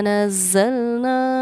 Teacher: اس کو سمجھیے، نون پر کیونکہ تشدید تھی تو ہم نے یہاں غنہ کیا، زا پر بھی تشدید ہے لیکن ہم نے اس پر غنہ نہیں کیا، کیونکہ ہمارے قاعدے کے مطابق نون یا میم پر تشدید ہو تو غنہ ہوتا ہے، اسی لیے ہم نے اننا اس کو پڑھا ہے اننا، ناک میں تھوڑی دیر آواز کو چھپانا غنہ کہلاتا ہے۔